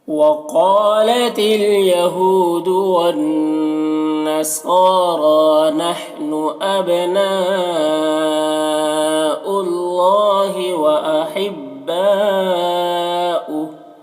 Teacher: نحن اب میں با میں قلقلہ ہوگا۔